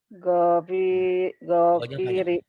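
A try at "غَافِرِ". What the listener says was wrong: Go-nya panjang.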